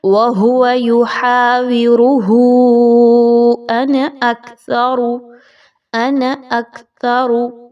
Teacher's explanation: انا یہ جو ورڈ آ رہا ہے اس کو آپ نے زیادہ لمبا نہیں کرنا